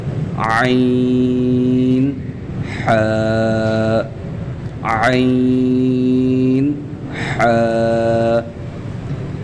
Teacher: गले के दरमियानी हिस्से से ऐन और हा अदा होते हैं · گلے کے درمیانی حصے سے عین اور ہا ادا ہوتے ہیں